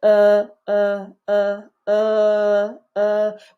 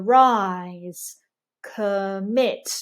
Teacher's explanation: so no lip rounding for the central vowels in British English so uh uh uh we want to avoid protruding the lips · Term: neutral lip rounding